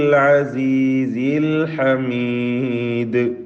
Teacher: ഐന് ഹ ഒക്കെ തൊണ്ടയുടെ മധ്യമാണ്